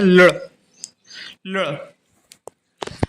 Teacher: अपनी जिव्या को दंत से ऊपर मूर्धा की तरफ ले जाएंगे और बोलेंगे ल तो इसका उच्चारण स्थान हो जाता है। · ला को देखेंगे तो ला बोलते हैं दंत से, और जबकि डा बोलते हैं मूर्धा से। तो अपनी जिह्वा को ला बोलते हुए मूर्धा की तरफ ले जाएं तो इसका उच्चारण होता है लड़